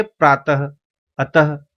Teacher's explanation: इसका उच्चारण व्यंजन के बाद ह की तरह करते हैं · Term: विसर्ग